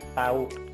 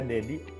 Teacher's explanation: Kemudian kalau D, misalnya nama saya Dedi, ketika belum ada E-nya, nah, posisi lidah itu ada di depan sedikit ketika itu memproduksi bunyi T. Kalau D itu dikebelakangkan sedikit.